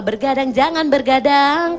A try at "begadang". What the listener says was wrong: Nggak pakai R nih, nggak pakai R. Nggak pakai R. Begadang. Begadang.